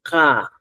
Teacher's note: el dorso de la lengua debe encorvarse, dirigirse hacia la parte posterior de la cavidad bucal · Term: posuvelada